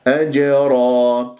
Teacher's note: وسط الكلمه قلقله الصغرى وان سكنت في اخر الكلمه قلقله الكبرى فلا بد لك انه تاتي بالقلقله تضرب المخرج وتهرب اضطراب في المخرج ما تقول لا تقف ولو جزء من الثانيه